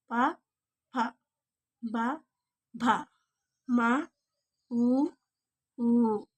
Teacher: పెదవులతో పలికే అక్షరాలు ఓష్ట్యాలు